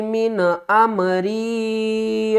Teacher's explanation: یہاں پر ہم نے غنہ نہیں کرنا کیونکہ حروف حلقی میں سے حمزہ آ رہا ہے